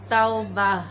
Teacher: تا وا زبر تو، با زبر با، توبہ، تا دو پیش تن، توبتن وقفاً، توبہ۔ گول تا جو ہے وہ وقف کی صورت میں ہا میں بدل جاتی ہے۔